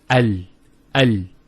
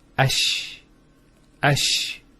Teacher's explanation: The actual points of articulation of the Lam and the Sheen are very close to each other.